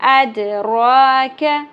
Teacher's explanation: दाल साकिन पे कलकला रॉपुर होगी, खड़ी ज़बर 1 अलिफ के बराबर खींचनी है, कैफ बारीक ज़बर को छोटा रखना है।